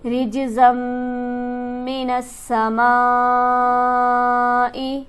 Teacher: رِجْزًا مِّنَ السَّمَاءِ جیم پر حرف قلقلہ ہے، یہاں پر آواز اچھلتی معلوم ہوگی. میم مشدد ہے لہٰذا یہاں پر غنہ کیا جائے گا اور اس میم پر ہمارے پاس مد موجود ہے، اسے ہم کھینچیں گے 5 الف کے برابر.